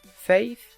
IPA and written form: feɪθ (faith)